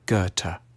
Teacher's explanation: A safe bet is to start with a hard G on G and end with a T